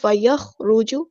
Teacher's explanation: خا ہمارا heavy letter ہے پورا ادا کریں گے لیکن خا ساکن کو ہلانا نہیں ہے